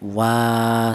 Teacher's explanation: Di sini ada huruf wawu. Wa yaitu ada huruf wawu yang berharakat berdiri. Di sini dibaca panjang ya. Panjangnya dua harakat. Satu alif atau dua harakat atau dua ketukan. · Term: mad thobi'i